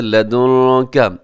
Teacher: اس میں نون ساکن کے بعد کاف ہے تو آواز کو ناک میں چھپائیے گا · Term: اخفا